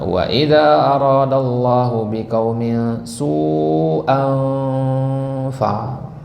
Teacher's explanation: Di situ ada huruf fa. Ya, fa itu kalau ketemu dengan tanwin maka dia dibaca dengan ikhfa namanya kalau dalam tajwid. Maka dia harus dilebur, berarti disamarkan.